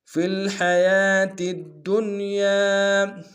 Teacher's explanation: فی الحیا میں حا کو گہرائی سے ادا کریں گے ، یا کے اوپر کھڑا زبر ایک الف دار میں کھینچیں